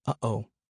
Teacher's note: The glottal stop can occur before and after all 4 vowels and after certain consonants and consonant clusters, produced by closure of the glottis so as to momentarily halt air passing through the mouth. The glottal stop resembles the interruption of breath one hears between the 2 O's in the English expression uh-oh.